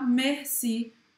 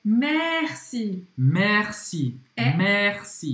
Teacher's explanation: Merci. É um E aberto, tá? Então não tenha vergonha de abrir a boca aí.